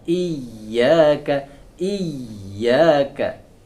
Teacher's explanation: Kemudian huruf hamzah atau alif masuk ke syiddah, huruf ya masuk ke rokhawah, ada aliran.